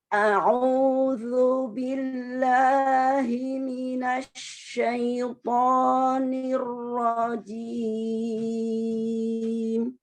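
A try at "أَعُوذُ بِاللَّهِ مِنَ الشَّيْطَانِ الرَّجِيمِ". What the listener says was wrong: Ya, lebih disantain lagi. Tapi huruf ain yang berdhamma lebih disempurnakan. A'udzu billahi minasyaitonir rajim. A'udzu irjakan. A'udzu.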